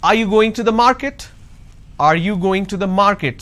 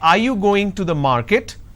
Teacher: So when I say are you going to the market, there is a rising tone.